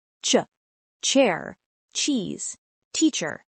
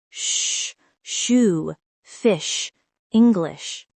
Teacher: Put your hand in front of your mouth. If you feel a short puff of air, it's CH.